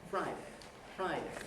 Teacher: it's the second syllable of friday and that is on a low pitch syllables after a falling nucleus are always on a low cage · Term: tail